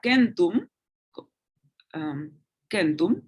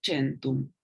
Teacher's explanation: la C suena como K en la clásica, incluso ante E o ante I, se leería centum, centum, mientras que en la italiana se leería centum.